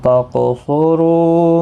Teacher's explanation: رو واو مدہ بھی ہے یہاں پر، اس کو ایک الف کی مقدار کے برابر کھینچیں گے